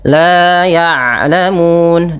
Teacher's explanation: huruf ain adalah salah satu huruf yang memiliki sifat bainiyah. Antara syiddah dengan rakhawah. Yaitu [berdehem] tidak terlalu dialirkan apa namanya bunyi suaranya dan tidak terlalu ditahan.